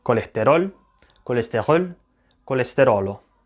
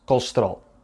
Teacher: If we listen to this word in Spanish, French, or Italian, we'll see that every syllable has more or less the same duration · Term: syllable timed